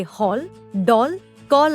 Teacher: यह आ तथा ओ के बीच की ध्वनि है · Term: अर्धचंद्र